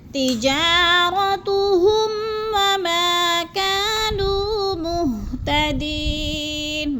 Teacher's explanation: ہم پہ غنہ نہیں کرنا، لفظ کو ظاہر کر کے پڑھنا ہے